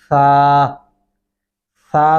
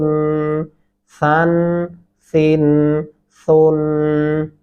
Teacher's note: सा नरमी से अदा होता है तो दोनों दांतों के नीचे जबान आ जाएगी